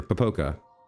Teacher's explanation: I'm going to put the stress on the second syllable